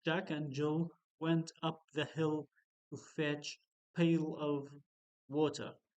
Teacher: the first quality is voice then whisper then breathy voice